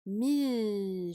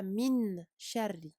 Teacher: nous cachons nous dissimulons le Noun derrière le Chine et nous faisons sortir le son par le nez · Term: dissimulation